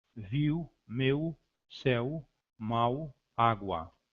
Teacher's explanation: Aproximante lábio velar, representada por entre barras inclinadas paralelas W, no alfabeto fonético internacional, é formada quando o pós-dorso da língua aproxima-se do palato posterior, ao mesmo tempo que existe um arredondamento dos lábios, sem, no entanto, existir fricção de ar. Encontramos essa semivogal, por exemplo, em viu, meu, céu, mal, água.